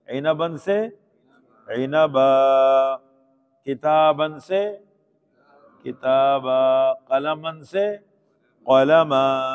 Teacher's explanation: 2 زبر پر وقف کریں گے تو الف مدہ بن جائے گا